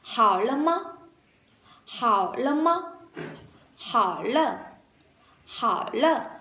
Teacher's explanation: Khi phát âm nhanh thì những cái từ lơ ví dụ như là từ từ lơ và từ mơ thì đọc rất nhẹ